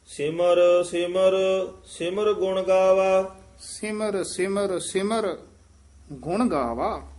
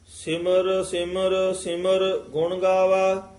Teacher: ਤੀਸਰੇ ਸਿਮਰ ਪਦ ਤੇ ਠਮਕ ਹੈ।